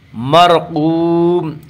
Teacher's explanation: مرقوم، واو مدہ، واو مدہ وہ واو جو ساکن اس سے پہلے پیش ہو، واو مدہ کو 1 الف کے برابر کھینچ کر پڑھیں گے